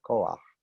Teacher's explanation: There's no aleph there, koach. One vowel flows right into the other.